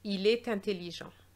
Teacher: We know about il and est already, but very often people don't know that there should be a liaison between the T of est and the vowel of the adjective here